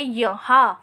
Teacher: हा के बाद जो आधे न का उच्चारण करते हैं वो करते वक्त ध्वनि मुंह के साथ साथ नाक से भी निकलती है, इसलिए हम यहाँ पर चंद्र बिंदु लगाएंगे। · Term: अनुनासिक